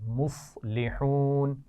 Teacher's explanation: مصلحون، صاد کو موٹا پڑھنا ہے، اس کا خیال رکھیے